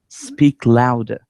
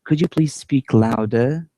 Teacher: we use falling intonation in order to order someone to do something for example we say speak louder now if you want to be more polite we use a rising intonation